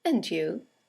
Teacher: And you is a statement. It has a falling intonation, and it's used to return the compliment or the greeting.